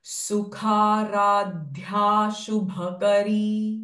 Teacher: ख साउंड ख is again महाप्राण sound